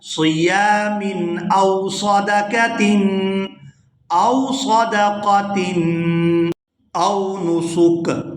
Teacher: صیام او صدقۃ، او صدقۃ، او نسک، یہاں پر بھی وقف کریں گے تو وقف کی صورت میں کاف جو ہے یہ ساکن ہو جائے گا۔ سین کو کاف ساکن کے ساتھ ملا کر ادا کریں گے۔